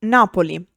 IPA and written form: ˈnapoli (Napoli)